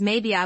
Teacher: Maybe I becomes maybe I with a smooth glide.